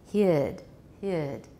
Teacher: it's quite diphthong in american english